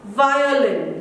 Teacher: it's your lips and your teeth somewhere they are used so it is articulated by using both the lips and upper front teeth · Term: labiodental